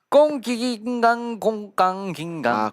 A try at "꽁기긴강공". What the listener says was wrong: 공이라고 하셨어요. 꽁이에요. 꽁기긴강 꽁입니다.